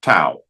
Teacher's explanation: la lengua toca los dientes y bloquea el aire un poquito para decir tau. Okay. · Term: dental